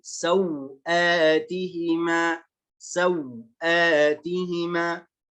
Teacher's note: الوجه الأول قصر الواو. الواو هذه تقرأ حركتين بقصر الواو وقصر البدل في آت · Jadi sau-nya dibaca 2 harokat, a-nya juga dibaca 2 harokat. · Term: قصر اللين وقصر البدل